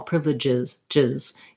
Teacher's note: You want to almost go right from the J to the Z sound, and just there's a little bit of vowel to connect the two.